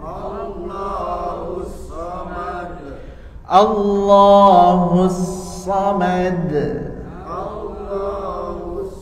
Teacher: perhatikan lam Allahu tebal kemudian Shad juga tebal